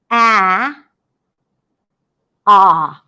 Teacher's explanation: Ah is a front sound, so my tongue moves forward. It has a front quality as well.